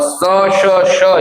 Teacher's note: स श ये जब आप बोलते हो तो इनमें भी कंपन कम होती है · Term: अघोष